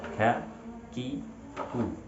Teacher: Seharusnya kita meletakkan pangkal lidah antara langit-langit lunak dan keras. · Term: huruf kaf